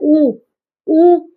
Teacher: ऊ में भी क्या है? मुंह बंद रहता है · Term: संवृत स्वर